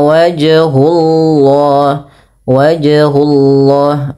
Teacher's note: Maka fasamma wajhullah, wajhullah, pada lafal wajhullah, wajh ada qalqalah, yaitu qalqalah sughra di tengah-tengah bacaan. Allahnya ini dibaca dengan tebal lafal lamnya karena dia sebelumnya harakat dhammah